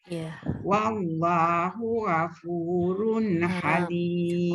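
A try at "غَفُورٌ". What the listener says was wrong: Ra itu tebalkan, jangan ra. Wallahu ghafurun gha.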